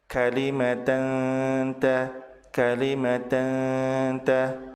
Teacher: Tanwin bertemu dengan ta dibaca samar, ditahan 2 harokat disertai dengan gunnah. Hukum bacaan ini disebut sebagai ikhfa hakiki.